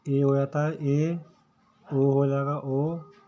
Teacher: अर्ध विवर्त होते हैं जिसके बोलते समय हमारा मुंह आधा खुलता है